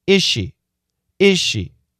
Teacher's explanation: S-H, sh sound. So, is ends with a Z sound. She starts with an S-H sound. The Z and the SH are similar sounds. · Is there a Z sound? Yes. But do we hear it? No, not really.